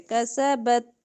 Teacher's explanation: تا پہ ہمس ہوتا ہے